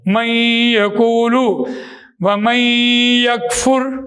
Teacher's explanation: ناقص میں نون ساکن کی آواز آدھی بند ہوتی ہے